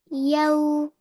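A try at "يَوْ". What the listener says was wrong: Yau wrong. Why? They're dragging.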